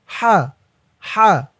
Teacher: আচ্ছা, তারপরে শব্দ হা জবর হা, হায়ের উপরে জবর দিলে উচ্চারণ হয় হা, হার আওয়াজটা গলার ভিতর থেকে চিকুন হয়ে বের হবে।